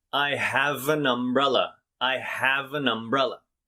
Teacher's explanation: blends into the next word that starts with a vowel so the v here leaves have and is added to the front of an and then the n in an is moved to the front of umbrella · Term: blending